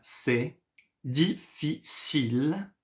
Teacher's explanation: You see, I did not pronounce the E at the end.